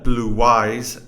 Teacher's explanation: we have an intrusive sound that we saw in previous video W which is also a semivowel which is at the boundary between the two words